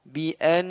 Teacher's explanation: bi'an ditahan gunnahnya, jangan sampai kita tinggalkan gunnah